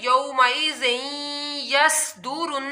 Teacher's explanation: स्वाद की आप लोगों ने सीटी निकालनी है